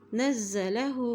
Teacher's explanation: فإنہ، فإنہ نزلہ، نون کی زبر کو زا سے ملاتے ہوئے پڑھیں گے کیونکہ زا کے اوپر بھی شد ہے